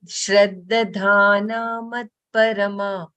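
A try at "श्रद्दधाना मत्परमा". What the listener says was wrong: No, it's not halant there. Shraddha Dana Mat Parama.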